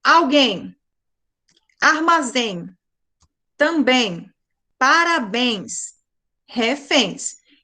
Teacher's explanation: Porque a última sílaba delas é tônica, é a mais forte, tá? E elas terminam com em e ens. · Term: oxítonas